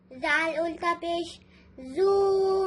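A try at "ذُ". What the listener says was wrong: जू नहीं पढ़ेंगे, इसको जा की तरह नहीं पढ़ेंगे। जू जा में बजिंग साउंड होता है, इसमें बजिंग साउंड नहीं होता है।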